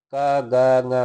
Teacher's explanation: का गा गा तो कम श्वास निकलता है। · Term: अल्प प्राण